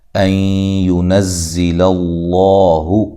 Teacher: لفظ اللہ کو موٹا پڑھنا ہے، ما قبل زبر ہے۔ · یہاں نون ساکن کا ادغام مع الغنہ ہے